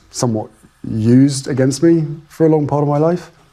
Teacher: he prefaces that claim with a hitch somewhat and with rising intonation, asking rather than stating. As a result, it sounds like he knows that it hasn't actually been used against him.